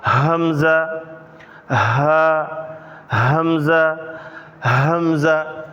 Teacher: اب جو گلے کے شروع سے ادا ہوتے ہیں وہ 2 حرف ہیں، حمزہ، ہا۔ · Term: حروف حلقی